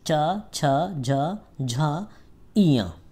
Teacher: तालु से। और ये च, छ, झ, झ, इया, ये जो 5 वर्ग हैं, 5 वर्ण हैं, इनका उच्चारण स्थान जो है तालु से होता है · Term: चा वर्ग